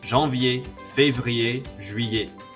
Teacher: pronounced like ier at the end and have a silent R and a silent T